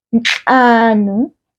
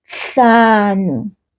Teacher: There is a nasal sound, nhlanu, and an aspirated sound, hlanu, much softer. And so when we want to say 5 homes in isiZulu, we will then say imizi emihlanu.